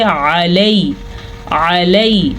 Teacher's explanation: علی، علی، یہ یالین ہے، یا ساکن سے پچھلے حرف کے اوپر زبر ہے تو یہ یالین ہے، یہ نرمی سے پڑھا جاتا ہے اور اس کو قطعاً لمبا نہیں کرتے